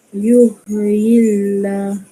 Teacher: Baris bawah atau kasrah bertemu Allah. Cara bacaan dia? Tipis. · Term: tarkik